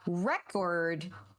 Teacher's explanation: That's what you're putting emphasis on, so you get the word record. But when you have record, that second syllable takes the emphasis, and it's what we call stressed